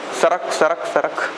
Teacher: सरक बोल रहे हो तो आपका जो है दांत एक्टिव हो रहा है